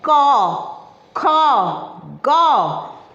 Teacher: स्पर्श व्यंजन में पहला जो व्यंजन है वो हम कंठ से बोलते हैं।